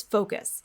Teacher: we said that we need to get the gliding on our o sound when we produce the word focus in american english